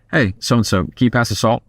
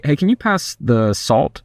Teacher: when you end on a lower note, it sounds more serious.